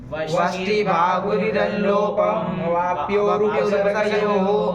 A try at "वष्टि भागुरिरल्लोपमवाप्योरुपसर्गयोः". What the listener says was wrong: तोड़ कहाँ रहे हो जब श्लोक को? जैसे लिखा है तो बोलो, अल्लोपम और अवाप्यो अलग कहाँ निकाल रहे हो?